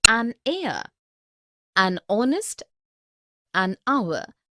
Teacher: Because the words heir, honest and hour begin with the vowel sound, as the initial consonant H is not pronounced